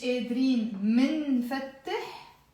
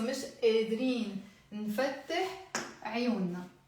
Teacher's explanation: So here what we are doing, we are dropping the meme.